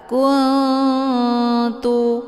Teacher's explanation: Na posisinya ujung lidah, kemudian ta juga posisinya ujung lidah. Cara bacanya, nunnya disamarkan, kemudian siap-siap menuju ke huruf ta. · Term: ikhfa aqrab